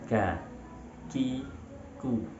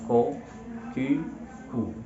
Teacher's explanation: Ketika kita membaca atau melafalkan huruf kaf, suaranya akan cenderung menuju ke bawah. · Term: istifal